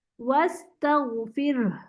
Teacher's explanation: اگر ہم ساکن کریں گے تو اس میں ہا کی آواز موٹی نکلے گی، جس میں ہمیں گردن میں بھی وائبریشن آئے گی. جو ہمیں یہاں پر صرف بھاپ اور سانس کی آواز تھی نا فتح میں، وہ یہاں نہیں آئے گی، بلکہ یہاں پر تھوڑی ہیوی آواز آئے گی، کیونکہ یہاں پر آواز بھی شامل ہوگی ہا والی.